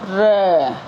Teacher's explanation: वह ध्वनि जिनका उच्चारण करते समय जीभ गोल हो और कांपती हो र बोल के बताए आप र प्र कंपित हो रही है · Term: लुंठित